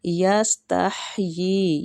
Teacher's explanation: سین باریک ہے سیٹی والا · یہ ہا جو ہے نا یہ وسط الحلق سے نکلے گا، مطلب حلق کا درمیانی حصہ، اور یہ کے اوپر مد ہو رہی ہے، یہ مد ہے مد واجب متصل۔